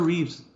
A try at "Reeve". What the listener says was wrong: Reeve. There's no S at the end. Reeve. Sorry. I'm a stickler.